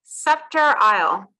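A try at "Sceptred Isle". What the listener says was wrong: It's sceptered, so the D is pronounced there. So sceptered Isle. So the D is presumably it's because of course it's a Shakespearean word that's referring to England, well, UK, British Isles, and so it's scepter. The apostrophe D is abbreviation of de as in French.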